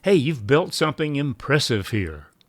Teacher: we use rising intonation in our voice, just like we do with a question, or we use expressive tone that suggests curiosity without forming an actual question.